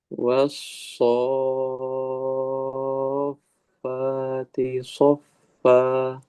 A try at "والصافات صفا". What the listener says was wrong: Faknya jelaskan, alirkan udaranya.